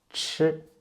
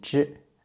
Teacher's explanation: Chi and zhi. Actually, they're pronounced in the same way, but ch are aspirated.